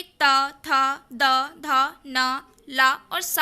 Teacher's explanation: ता वर्ग के जो भी शब्दांश या वर्ण होते हैं उनका उच्चारण स्थान दंत्य होता है